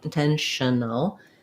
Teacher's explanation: the TION is an SH sound, intentional. There's almost no vowel there. We're going to go quickly from the SH to the N, and also quickly from the N to the AL, intentional, no.